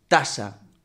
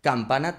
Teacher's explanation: La T solo cambia en que se pronuncia con la parte delantera de la lengua en las arruguitas que tiene el paladar duro ahí detrás de los dientes. Y la K se eh pone la lengua justo en el velo de paladar atrás.